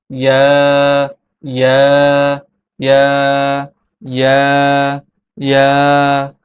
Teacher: ইয়া হরফটি জিহ্বার মধ্যখান তার বরাবর উপরের তালুর সঙ্গে লাগিয়ে উচ্চারিত হয়।